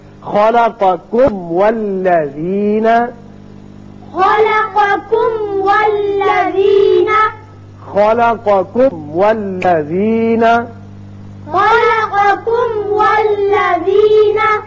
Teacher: میم کا اچھی طرح اظہار کیجئے، پھر واو پر ہونٹ کو گول کیجئے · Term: میم کا اظہار